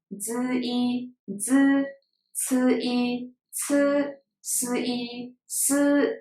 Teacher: These 3 initials combined with a vowel E, but the E doesn't really have a sound there. Just directly z, c, s sound.